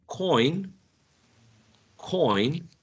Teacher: the initial sound is aspirated